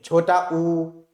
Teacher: छोटा ऊ बोला जाए तो देखो ओठों की स्थिति जो है वो गोलाकार हो जाती है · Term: वृत्तमुखी